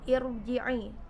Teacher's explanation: Irji'i sukunnya ro-nya dibaca tebal atau tafkhim.